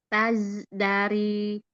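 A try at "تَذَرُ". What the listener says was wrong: Nah, tidak dipotong, bukan taz dari, tidak ada jedanya.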